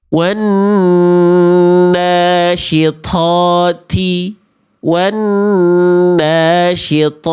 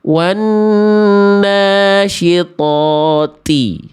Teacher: nggak boleh to keluar percikan nafas